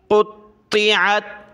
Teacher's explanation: فالذین کفروا قطعت, قاف طا پیش قطع زیر طی, قطی, عین تا زبر عد, قاف کو طا کے ساتھ ملایا, دونوں موٹے ہیں, طا کو موٹا کیا, طا کو سخت کرنا ہے تشدید کی وجہ سے